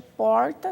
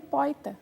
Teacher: A vocalização é quando tende para um I. Ao invés de porta, seria poita.